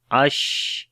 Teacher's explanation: شین کے اوپر صفت تفشی ہے اور صفت ہمس بھی ہے